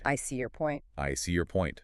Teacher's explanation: The stress lands on the noun, on point.